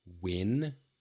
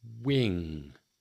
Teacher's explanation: Give those a little bit of practice and see if you can get that ringing quality in the ing and the nasally quality to it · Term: ing sound